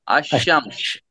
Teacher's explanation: اگر ان کے شروع میں الف اور لام آ جائے گا تو لام اس کو نہیں پڑھیں گے ہم، ٹھیک ہے، جیسے الشمس پڑھیں گے ہم سیدھے، یہاں لام جو ہے یہ ختم ہو جائے، یہاں لام کو نہیں پڑھا جائے گا، الشمس کہیں گے ہم اس کو سیدھے کے سیدھے